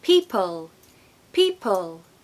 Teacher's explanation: you also have an L that is a bit of a dark L it's not a bright l meaning it doesn't happen at the front of the mouth it's not L it's it happens behind your tongue it's darkened